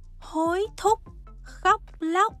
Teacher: trong tiếng Việt, khi đọc những chữ có chữ c đứng cuối thì 2 môi của tụi mình sẽ bị khép lại ngay sau khi đọc